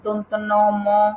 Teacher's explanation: এগুলোর উচ্চারণকালে মুখবিবরের বাতাস নাক দিয়ে বের হয় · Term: নাসিক